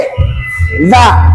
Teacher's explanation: Dari ujung lidah dengan ujung gigi